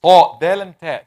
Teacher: The tip of the tongue touching up on the root of the gum, closer to the root of the top incisors. الثنايا العليا.